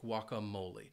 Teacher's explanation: I love guacamole. And it has four syllables, and the stress is on that third syllable.